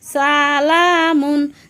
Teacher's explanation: সিন সামনের নিচের দাঁতের আগা থেকে শীর্ষসহ পাতলাভাবে আদায় হবে